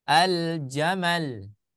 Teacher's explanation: Jadi tidak di idghamkan akan tetapi dia diizharkan seperti itu ya